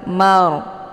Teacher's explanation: hukum bacaan ra ini ditebalkan yaitu bacaan tafkim karena kalau Ra sukun itu ditunjau kepada harakat di belakang kalau · ro ini dibunyikan secara tebal Mar dengan posisi pangkal lidah terangkat ke langit